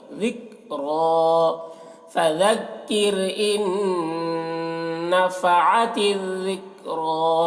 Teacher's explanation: اب یہاں پر دیکھیے نون، اس نون کو نہیں پڑھنا ہے بلکہ اس حمزہ کو اس نون کے ساتھ ملا کر پڑھنا ہے، نون مشدد ہے تو یہاں پر غنہ کرنا ہے، ان نفعت الذکریٰ، ذال کو باریک، کاف کو باریک، را کو موٹا کر کے